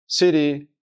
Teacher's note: se reproduce como una especie de r suave del español